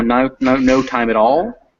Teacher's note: Yeah, sometimes when you go fast, some variations on this would happen in more if you're speaking faster, as you say, in no time at all, and at all would kind of fuse together, and that T would do what T's do between vowels, and it would become that D sound, that kind of D-like sound.